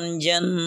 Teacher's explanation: جس پر وقف کریں اس پر شد ہے تو شد واضح ہونی چاہیے، وقف کرتے ہوئے بھی شد کو ادا کیا جائے گا